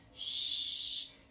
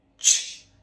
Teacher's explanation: Sh. Is a lot softer. Our lips aren't as round. Um but when we do ch, there is a lot of force there